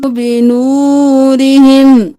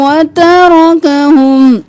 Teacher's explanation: را کے نیچے زیر تھی باریک پڑھا، را کے اوپر زبر ہے تو موٹا پڑھا